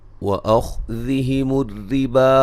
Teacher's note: خا کو موٹا ادا کریں گے، را کو باریک پڑھیں گے